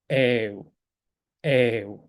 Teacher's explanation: 에우 에를 길게 발음하시면 돼요